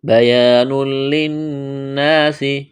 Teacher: بیان، یہاں بھی الف مدہ ہے، تنوین کے بعد لام ہے، ادغام کریں گے بغیر غننے کے۔ بیان للناس، نون مشدد ہے، غنہ کریں گے، الف مدہ ہے۔